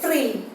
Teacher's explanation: You can see a vibration of the tongue is just moving more than once. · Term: trill or roll